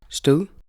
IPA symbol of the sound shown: ð